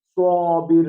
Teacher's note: یہ اس میں بھی جو صابر سیٹی ہے لیکن اوپر کی طرف آواز نکلے گی